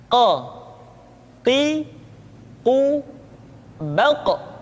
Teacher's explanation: Huruf Qaf diucapkan dengan cara menyentuhkan pangkal lidah kita dengan langit-langit bagian belakang. · Diucapkan dengan suara yang tebal dan dalam posisi sukun, maka terdengar pantulan suara.